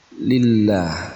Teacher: pada kalimat lillah karena didahului dengan huruf hijaiyah lam berharakat kasrah Nah di sini ada huruf lam pada lafdzul jalalah kasrah maka dibacanya tarqiq atau tipis